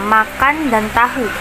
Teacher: bunyi fonem n diucapkan secara dental dan bunyi fonem t diucapkan secara dental